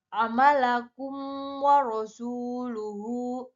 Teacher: Cara membacanya itu adalah jelas, terang, yaitu memasukkan huruf mim yang sukun dengan merapatkan bibir. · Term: izhar syafawi